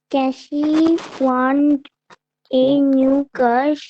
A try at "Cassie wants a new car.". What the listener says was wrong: এস গুলো উচ্চারণ করার চেষ্টা করো। ওয়ান্স, জোর দাও, এসে জোর দাও, put press on S. ওয়ান্স, জোর দাও। ক্যাসি ওয়ান্স, জোর দাও।